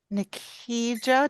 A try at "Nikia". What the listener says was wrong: Nikia, the J silent. You can call me Nikki.